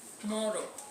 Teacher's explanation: Now there are those where you stress the middle, like tomorrow. Emphasis is placed on the middle, tomorrow.